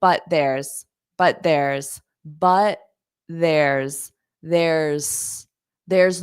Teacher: now notice I don't pronounce that T on but